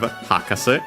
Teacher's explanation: The accent of Hakase on its own is on the ha.